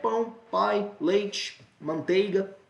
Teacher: Aqui a gente está saindo da vogal e indo para a semivogal. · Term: ditongos decrescentes